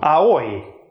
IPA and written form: aoi (aoi)